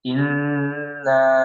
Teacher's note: Bisa di bawah itu di legenda itu ada keterangan bahwa ini adalah gunnah dan ditahan 2 sampai 3 harokat